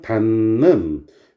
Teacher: 받침 비읍이 미음으로 발음됐죠. 닿는, 디귿이 니은으로 발음이 되죠. 니은에다 획을 더한 거니까.